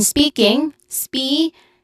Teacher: spe, which is the first syllable is a stress syllable, has a long e sound, and then king has a short e sound with an ng or nasal sound at the end.